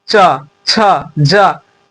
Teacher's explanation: आपका जो जीभ है वो तालु में सट रहा होगा।